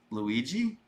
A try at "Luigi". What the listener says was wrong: What happened at the end of it there? All right, you did it. You're going to high. Why are you going to high pitch?